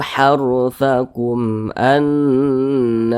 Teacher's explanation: huruf ba bukan huruf mim maka semua hukumnya izhar syafawi karena izhar dibaca jelas tidak tak berdengung dibaca pendek saja